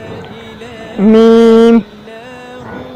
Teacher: मीम दोनों होंठों के खुश्क हिस्सा से अदा होता है